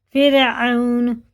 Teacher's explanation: یہ حرف لین ہے، اس کو مجہول آواز سے بچائیں